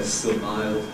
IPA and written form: səˈmaɪl (smile)